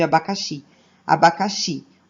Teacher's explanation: O xi é o mais forte, não tem acento, mas é a sílaba mais forte. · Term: oxítonas